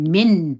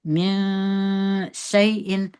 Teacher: ژبه به لوړه نه راخېژوي د نون مخرج ته ژبه به لاندې پرېږدئ نون به په غوڼه کې پټ کړئ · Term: اخفا